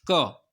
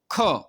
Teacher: जैसे हम बोलते हैं, पहले देखिए आप, जैसे आपने बोला क, तो क्या हुआ, अल्प श्वास लगी, और हम जैसे बोला ख, तो उसमें क्या हुआ, अधिक श्वास लगी। तो यही है, जहाँ कम श्वास लगे वह अल्प प्राण, और अधिक श्वास लगे वह क्या हो जाएंगे, महाप्राण